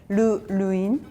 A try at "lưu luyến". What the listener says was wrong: Yeah, but the word lưu make it longer, like lưu luyến.